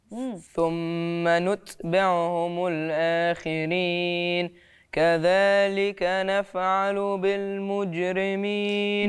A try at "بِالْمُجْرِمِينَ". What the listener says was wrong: بالمجرمين، وطلعش الهوى من الأنف.